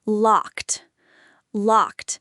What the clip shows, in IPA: lɒkt